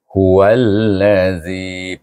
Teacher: Hu ini ha waw alif hendaklah diidghamkan pada huruf lam tasydid dengan hukum idgham syamsi. Waw alif lam wal.